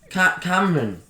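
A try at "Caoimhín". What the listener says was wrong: No, that's not. There's no run or am. It's just Cayman.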